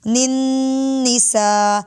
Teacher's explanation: نون مشددہ غنہ کریں گے، ناک میں آواز کو لے جا کر لمبا کریں گے